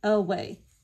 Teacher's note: for this one we know that a y says a but that first a is going to make a schwa sound